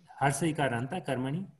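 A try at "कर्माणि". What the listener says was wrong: No, karmani dirgham.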